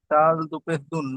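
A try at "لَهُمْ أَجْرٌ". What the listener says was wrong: এটা দাল নয়, এটা র। লাহুম আজরুন।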